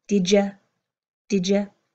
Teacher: You hear my did and you, this D and Y, coming together to make this word of did ya